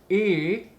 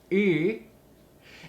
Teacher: So many people will do either E, and we have a retracted tongue where the front is moving back, E. Watch out for that because that's stabilizing the larynx with your tongue.